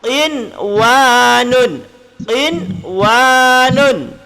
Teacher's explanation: Nun mati bertemu dengan waw. Nun dengan waw bersambung. Dan bila bersambung, maka kena baca jelas. Itulah yang disebut dengan izhar mutlak.